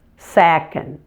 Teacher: make sure you smoothly blend the N and the D together at the end